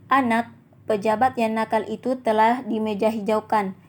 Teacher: jeda yang agak lama antara anak dan pejabat pada kalimat 1 dan antara pejabat dan yang pada kalimat 2, makna kalimat itu berbeda.